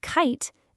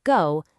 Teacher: In kite, that C is voiceless. But in go, the G is voiced. You turn on the vibration.